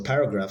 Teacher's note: paragraph has the stress on the first syllable